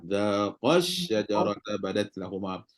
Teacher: Kena baca zaqash dekat qa tu. Tekan kat qa tu, bagi tinggi suara. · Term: nabru